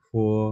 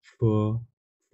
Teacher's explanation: আমরা যখন পির উচ্চারণ ফ এর মতো করবো তখন আমাদের মুখ থেকে কোনো বাতাস বেরোবে না, স্বাভাবিকভাবে হবে আর কি। আর যখন এফ এর উচ্চারণ করবো মুখ থেকে হালকা একটু বাতাস বেরোবে